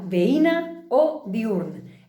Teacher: És assenyalar que la vocal I o U no formen diftong amb la vocal anterior